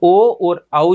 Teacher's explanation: ओ और औ जो स्वर ध्वनियाँ है उनका उच्चारण किसके माध्यम से किया जाता है? कंठ और ओष्ठ के माध्यम से किया जाता है। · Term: कंठोष्ठ ध्वनियाँ